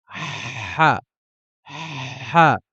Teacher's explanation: Le ha va être une pression à l'intérieur de la gorge. On va mettre une pression de sorte à freiner un peu l'air. Ha, ha. Il n'y aura pas de correspondance en français pour le ha.